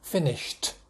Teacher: here's the sh sound it's unvoiced and so it needs an unvoiced ending